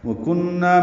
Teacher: وکنہ میں کاف باریک نون مشدد پہ غنہ ہے اور نا الف مدہ ہے۔